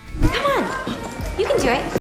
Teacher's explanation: The auxiliary verb can is usually reduced to kun.